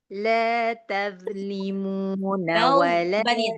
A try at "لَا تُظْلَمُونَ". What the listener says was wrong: Tebalin. Zonya tebalin. La taz.